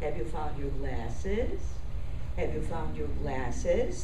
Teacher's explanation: it's one line okay it's gradually going up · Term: rising pitch